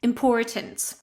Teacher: So, it's going to be im-por-tint, important. And in the American variety, you will pronounce the r